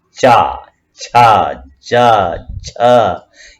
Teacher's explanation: इनका उच्चारण जीभ और तालु महसूस करेगी। आप देखिए, जीभ और तालु को जब टच करते हैं तो ये अक्षर निकलते हैं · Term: तालव्य